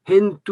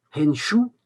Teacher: Hentu, on peut dire henshu, dans certains coins. Donc le T devient che, vous voyez.